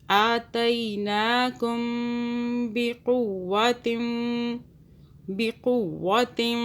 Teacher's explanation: یہ با آ رہا ہے تو ہم میم پہ غنہ کریں گے۔ آتیناکم بقوۃ، بقوۃ، واو پہ بھی ہم 2 سیکنڈ کے لیے ہولڈ کریں گے۔